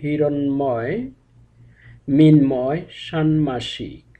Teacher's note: মূর্ধন্য এর সঙ্গে ম যুক্ত থাকার কারণে ম এর উচ্চারণটি স্বাভাবিকভাবে হয়েছে